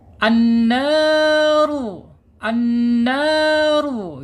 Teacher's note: dibaca tebal ya tebal karena apa karena di sini ada harakat domah ya